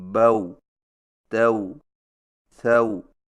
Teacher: اور اس کی ادائیگی کا طریقہ یہ ہے کہ ہونٹوں کو اوپر کی طرف کھولنے کے فوراً بعد گول کرتے ہوئے نرمی سے بغیر کھینچے پڑھیں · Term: واو لین